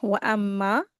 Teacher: मीम मुशदद है और फिर गुना करके पढ़ेंगे और फिर इसको दो हरकत खींचेंगे।